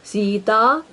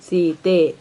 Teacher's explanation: ಪದಗಳ ಕೊನೆಯ ಆ ಎಂಬ ಸ್ವರವನ್ನು ಎ ಎಂಬುದಾಗಿ ಬದಲಾಯಿಸುತ್ತೇವೆ.